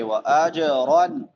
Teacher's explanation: جیم حروف قلقلہ میں سے ہے، اس کو ہلا کے پڑھیں گے